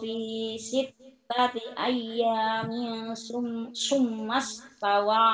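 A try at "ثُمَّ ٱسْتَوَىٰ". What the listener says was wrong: Betul, itu tadi sa summa bukan sin, summa. Sa. Sa itu sa ya. Titiknya sama tiga tapi bukan ya, sin. Enggak ada rumahnya cuma satu.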